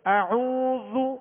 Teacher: کا پیش پڑھیں گے تو ہونٹوں کو گول کریں گے، اعوذ۔ اب یہاں واو مدہ ہے، ایک الف کی مقدار میں کھینچیں گے